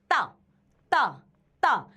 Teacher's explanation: ता को हम कंठ से नहीं, ता को हम जीव और दांत से बोलते हैं, दंत से।